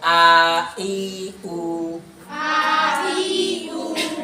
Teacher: উর সময় কি ঠোঁট গোল হলো না? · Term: পেশ